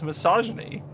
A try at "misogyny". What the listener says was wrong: No, it is misogyny, but you emphasized the massage.